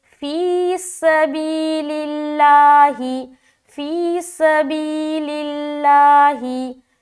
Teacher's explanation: لفظ اللہ کا لام کو باریک رکھنا ہے، کیونکہ لام کے نیچے زیر آ گیا